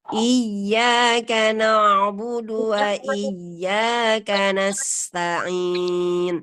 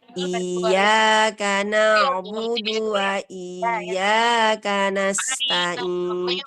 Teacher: Bacaan yang salah adalah iya, i-nya dipanjangkan.